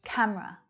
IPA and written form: 'kæm rə (Camera)